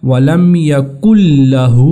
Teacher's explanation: نون کی آواز کو ہم نے داخل کر دیا ہے لام میں، تو یہ ہوگا ولم یکن لہ۔ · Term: ادغام